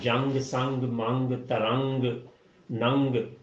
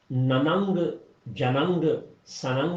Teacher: بالکل اسی طرح سے جیسے جب ہم اردو میں بات کرتے ہیں تو جنگ، سنگ، منگ، ترنگ، ننگ، تو یہ ہم نننگ، جننگ، سننگ نہیں کہتے، نن، جنگ، سنگ ہی کہتے ہیں۔ تو نون کو ناک میں چھپا لینا ہے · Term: نرم غنہ